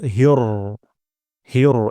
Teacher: এখানে হা চিকন হবে র মোটা হবে